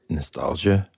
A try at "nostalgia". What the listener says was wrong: It kind of sounds like you're saying like nostalgia. Like there's like an SIA in there.